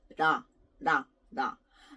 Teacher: So when you say ra, your tongue is actually nowhere, touching almost nowhere in your mouth. So unlike la with an L, your tongue doesn't touch behind your teeth, behind your top teeth. And not like R, you don't roll your tongue. So it's like in between la and ra. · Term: in-between sound